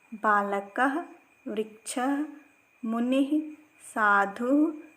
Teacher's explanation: विसर्ग का उच्चारण कंठ से होता है। इसकी ध्वनि ह जैसे होती है।